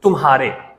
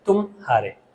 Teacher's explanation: कभी-कभी उन दो ध्वनियों के बीच में एक एक विराम या एक ठहराव जैसा होता है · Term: संगम